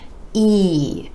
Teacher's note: The sides of the lips retract just a bit for this sound, and you want to give it more stretch, more duration, and a little more energy.